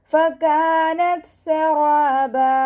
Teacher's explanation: കാഫിൻ്റെ കൂടെ അലിഫ് മദ് 2 കൗണ്ട് നീട്ടിക്കൊടുക്കുക. ത സുക്കൂനാവുമ്പോൾ കുറച്ച് എയർ പാസ് ചെയ്യുന്ന സൗണ്ട് കൊടുക്കുക. കൽക്കലയുടെ ലെറ്റർ ഇല്ലാത്തത് കൊണ്ട് ഹാഫ് സുക്കൂനും കൊടുക്കാൻ ശ്രദ്ധിക്കുക കേട്ടോ.